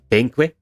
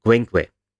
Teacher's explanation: This is a change that might first appear quite unexpected, as P and Qu are not quite similar to each other, but when you break it down to the components, it makes some amount of sense. The P here is labial stop, so this is a stop consonant that is made with the lips, and the Qu has a velar stop, the K, and it has a labial secondary articulation, the W. So when you go from P to Qu, you retain both of these attributes, but you break them up into two articulations.